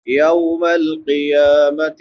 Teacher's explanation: قا موٹا بھی کریں گے اور اس پہ قلقلہ بھی کریں گے